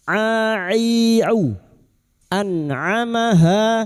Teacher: Huruf ain wastul halqi atau tengah tenggorokan